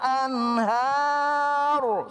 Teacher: Anhar di situ haknya apa ro-nya dibaca tafhim.